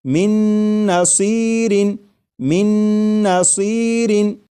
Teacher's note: میم کے بعد نون مشدد جو ہے اس کی آواز آئے گی اور غنہ کے ساتھ پڑھیں گے